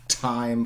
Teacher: alveolar plosives, which means your tongue tip just hits the alveolar and then you let it explode